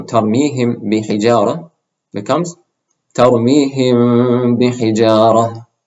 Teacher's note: And the second rule is if you have a meme with sukoon followed by a ba, then you make this meme into a light meme sound and you also do a ghunna